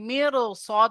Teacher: র সাকিনের পরে সদ এসছে আর র সাকিনের আগে জের আছে তো এখানে র কে পুর করে পড়তে হবে